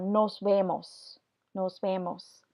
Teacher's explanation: and then here we have an e so this v stays the regular letter v does not change into that softer B sound